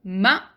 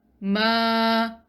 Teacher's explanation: This kind of mad, which we just learned, is only 2 counts. So mim fatha ma is single count, and mim fatha followed by empty alif is ma, which is double count.